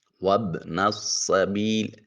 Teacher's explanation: سین پھر حرف صفیریہ سیٹی کی آواز آئے گی